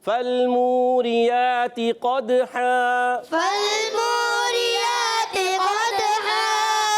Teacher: قد ہا میں قاف پر رکھیں گے اور دال میں قلقلہ کریں گے · دو زبر کی تنوین کو الف سے بدل دیں گے · اور یہاں پر واو مدہ ہے، ایک الف کھینچ کر ادا کریں گے. را کے نیچے زیر ہے، را کو باریک پڑھیں گے، یا پر کھڑا زبر ایک الف کھینچ کر ادا کرنا ہے.